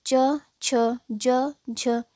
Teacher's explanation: छोटी ई और बड़ी ई का उच्चारण स्थान तालू है और च छ ज झ इसका भी उच्चारण स्थान तालू होगा